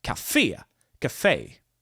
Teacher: the word Cafe is stressed on the last syllable